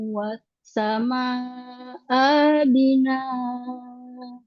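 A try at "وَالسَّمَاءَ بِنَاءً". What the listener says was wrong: wassama abina. Ya mat badal, bukan itu. Pokoknya satu, nggak ada matnya, bukan mat badal. Wassama abina.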